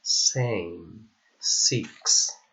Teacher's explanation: S, which is voiceless alveolar and fricative sound